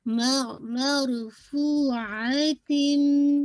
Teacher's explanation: تنوین کی آواز کمپلیٹلی مرج ہو رہی ہے میم میں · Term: ادغام کامل